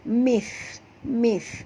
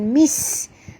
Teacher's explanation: Sa di sini makhrajnya sentil di hujung lidah. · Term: huruf sa